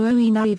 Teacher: is now normally pronounced as two syllables, with the stress on the second, in the French manner